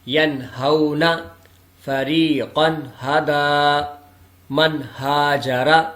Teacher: نون ساکن اور نون تنوین کے بعد حروف ہلکی میں سے ہا آ رہا ہے تو یہاں بھی غنہ نہیں کیا جائے گا